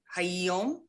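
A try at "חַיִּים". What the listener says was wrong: So there's a chirik, 1 dot under the first yud. Chayim. Maybe you mispronounced the one before it.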